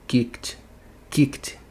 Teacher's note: Não vozeado, coloca um T.